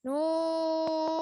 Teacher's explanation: dibaca panjang 6 harakat atau tiga Alip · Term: mad lazim Harfi mukhaffaf